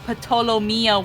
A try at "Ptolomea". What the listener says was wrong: Ptolomea, the P is silent. Like a pterodactyl.